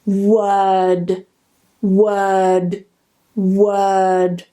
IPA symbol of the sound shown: ɜː